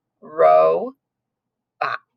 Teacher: it's an open syllable that's going to be a long o